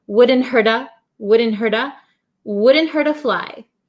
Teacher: the t becomes a flap t. So, it sounds like a soft d sound.